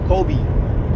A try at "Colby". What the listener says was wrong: That's Colby. Kobe with an L. Colby.